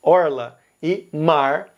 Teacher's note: Goiás vai usar o R retroflexo